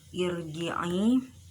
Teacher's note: ada huruf jim makharijul hurufnya yaitu wasatul lisan, tengah-tengah lidah. Kemudian sifat-sifatnya yaitu jahr, syiddah, istifal, infitah, ismat dan qalqalah.